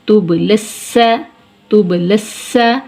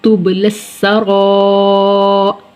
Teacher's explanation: با حروف کلکلہ میں سے ہے اور حالت سکون میں ہے، ہلکی سی جنبش ہوگی